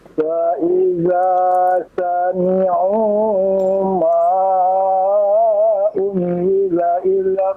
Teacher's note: Sami'u ma, panjangkan 5 harokat Pak ya.